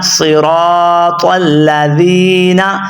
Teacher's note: آپ نے زال پڑھنی ہے، زا ہرگز نہیں پڑھنا، زا پڑھیں گے تو آپ کے لفظ کے اندر غلطی ہو جائے گی۔